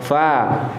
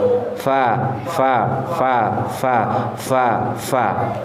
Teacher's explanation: Jadi gigi seri atas ujungnya nempel di bibir bagian dalam bawah. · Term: Huruf fa